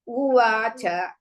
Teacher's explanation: Va is dirgha. U is Risva. Cha is Risva.